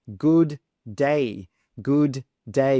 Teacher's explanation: we've got two D's next to each other so we simply drop one and say One D sound